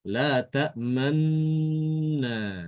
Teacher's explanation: isyarat memoncongkan bibir ke depan ketika terjadi idgham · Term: bacaan ismam